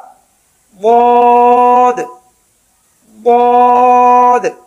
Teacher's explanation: line number 3 ضاد، اس کا مخرج زبان کی دائیں کروٹ دائیں طرف والی اوپر یا نیچے کی داڑھوں سے لگے